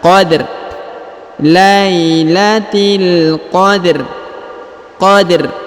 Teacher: huruf rnya disukunkan dengan bacaan tipis